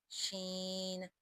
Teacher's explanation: شجریہ میں شامل ہے، یعنی وسط زبان اور مقابل کا تعلق، شین، اس میں تفشی پیدا ہوگی، شین۔ آگے صاد حروف مستعلیہ میں شامل ہے، صاد، صاد، ضاد، ضاد، ضاد، طا، طا، طا۔